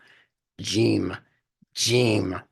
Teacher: if you're pronouncing it correctly it's from the back of the throat also as a gutter G G you have to force it from the back of the